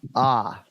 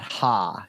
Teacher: it's that second syllable ah not ha even though you see the H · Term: H is silent